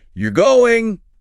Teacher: And with emphasis, falling tone, you're going. Surprise, or maybe determination.